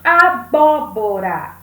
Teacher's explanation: nós temos a antepenúltima sílaba mais forte então essa palavra é uma palavra proparoxítona para você sempre lembrar